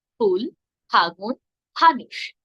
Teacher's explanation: থেকে বাতাস বেরিয়ে যায় এর উচ্চারণ কিন্তু ফ হবে হবে না উচ্চারণ হবে দুই ঠোঁট এক করে একসঙ্গে ছেড়ে দিতে হবে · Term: মহাপ্রাণ